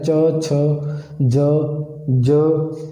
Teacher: जीभ अपने दंदां दे उपरली साइड का हिस्सा जो है उसनूं टच कर रही है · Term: तालवी